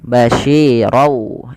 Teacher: yang dimasukkan teman-teman yaitu bunyi tanwin ronnya masuk ke wau sehingga suara nunnya diganti dengan huruf wau sehingga menjadi basyirau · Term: idgham